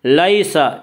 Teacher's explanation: یالین کو نرم آواز کے جلدی پڑھیں گے۔